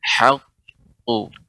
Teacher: Ha dia tetap tipis, ya tidak tebal. Yang tebal ketika mengucapkan qafnya, ya.